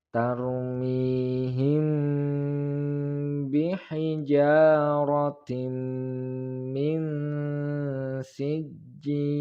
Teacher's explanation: ketika membaca tanwin langsung dimasukkan atau ditasdidkan ke huruf mim, · mim sukun bertemu dengan ba, maka hukum bacaannya adalah ikhfa syafawi. Cara membacanya yaitu samar-samar atau didengungkan. · Tarmihim mi mad tabi'i panjang 2 harokat. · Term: ilgham bi gunnah